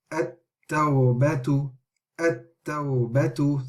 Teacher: So the lam is being skipped. We are joining onto the ta, which has a shadda.